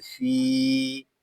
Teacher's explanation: فا کو ہم ایک الف تک کھینچ کر پڑھیں گے کیونکہ یہاں پہ یا مدہ ہو رہا ہے